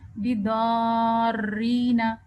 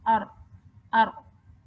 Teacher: بس ایک دفعہ زبان آپ کے را کے مخرج کو ٹچ کرے اور واپس پلٹ کے آ جائے, تو جو ایک دفعہ ٹچ کر کے واپس پلٹ کے آنا ہے نا, یہ تکرار ہے اور یہ صفت را میں ہونی چاہیے.